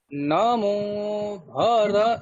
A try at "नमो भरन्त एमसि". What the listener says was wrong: নমো, নমো, মোটাকে নিচে নামাতে হবে। নমো, ঠিক আছে?